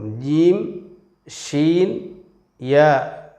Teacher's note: മഹ്റജിൽ നിന്ന് തന്നെ പുറപ്പെടുന്ന അക്ഷരമാകുന്നു ഈ മൂന്ന് അക്ഷരങ്ങളും ജീം ഷീൻ യ ഈ മൂന്ന് അക്ഷരങ്ങളും നാവിൻറെ മധ്യം അണ്ണാക്കിൽ സ്പർശിച്ചു കൊണ്ടാണ് ഉച്ചരിക്കുന്നത്